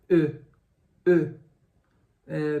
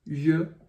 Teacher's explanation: e o som é mais ou menos assim e e eh percebe que eu fechei um pouco minha boca ela ficou um pouco mais redonda